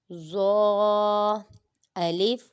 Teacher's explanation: ظا میں سیٹی کی آواز نہیں آنی چاہیے اور اس کو پر بھی پڑھیں گے کیونکہ یہ حروف مستعلیہ میں سے ہے.